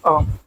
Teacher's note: केंद्र मध्य स्वर में एक ही आता है वो है अ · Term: केंद्रीय मध्य स्वर